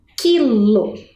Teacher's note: a gente não escutou o som da vogal u